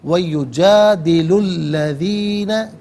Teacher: یجادلو میں لام پر پیش ہے، اسے الذین کے لام کے ساتھ ملائیں گے، درمیان میں سے الف حمزہ کو حذف کیا جائے گا